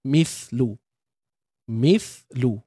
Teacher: Untuk sa mati, keluarkan hujung lidah.